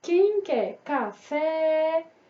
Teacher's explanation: o fé fica mais tempo na sua boquinha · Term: sílaba tônica